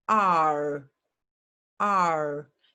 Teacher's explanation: When I say the long vowel sound R, my mouth starts wide open, R, and then it closes